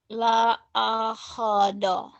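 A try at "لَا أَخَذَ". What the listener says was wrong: La akhoda. Jangan la akhodo ya. La akhoda.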